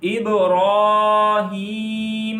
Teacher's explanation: را کو ایک الف جتنا لمبا کریں گے اور را کو موٹا پڑھیں گے